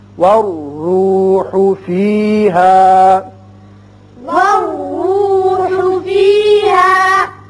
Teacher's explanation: را پر ہوگا، اوپر پیش ہے